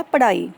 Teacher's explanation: ਥੋੜ੍ਹੀ ਜਿਹੀ ਹਾਹੇ ਦੀ ਸਾਊਂਡ ਆ ਰਹੀ ਹੈ, ਇਸ ਕਰਕੇ ਅਸੀਂ ਉਹਨੂੰ ਦੇ ਪੈਰ ਵਿੱਚ ਡਾੜੇ ਦੇ ਲਗਾਉਂਦੇ ਪਏ ਹਾਂ।